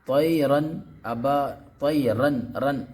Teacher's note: نون کو ظاہر کر کے بلا غنہ کے جلد پڑھیں گے، اس کو اظہار کہتے ہیں